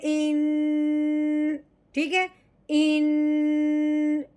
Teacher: नून का गुन्ना क्या है कि हमने ज़बान को ऊपर वाले जो मसूड़े हैं ना, मोटे मसूड़े, उसके ऊपर ज़बान को टिका देना है और नाक में से आवाज़ निकालनी है